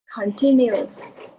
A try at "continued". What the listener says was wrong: so the stress is not on the second syllable, it's on the first syllable. Continued. Yes, the first syllable.